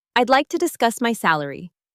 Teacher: Notice the stress on discuss and salary. Keep it calm, confident, and matter of fact.